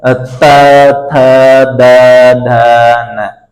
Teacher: जिनको बोलते समय हमारी जीभ सीधी दांतों में लगती है, ऊपर वाले दांतों में लगती है